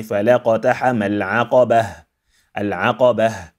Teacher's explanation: It is not an open ta. So a closed ta, when we stop on it, we turn it into a silent ha.